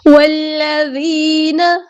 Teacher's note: جب ہم واو کو لام کے ساتھ ملائیں گے، ذال باریک نرمی سے ادا ہوگا · سے ادا ہوگا، ٹھیک ہے۔ والذین، اور یا مد آئی ہے تو مد اصلی کریں گے ایک الف کے برابر یعنی 2 حرکات، 2 کاؤنٹس ہم اس کو لمبا کریں گے